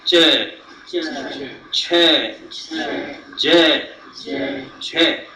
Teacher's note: Only the part of the tongue which is just behind the tip, that is working, and it is touching the portion which is just behind your upper gums.